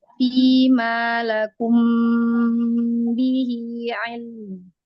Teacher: Seberapa durasi lam, segitu durasi mim.